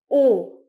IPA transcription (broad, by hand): ɔ: